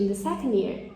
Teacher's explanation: É como se o D não existisse, para ir com mais fluidez. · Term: elision of plosives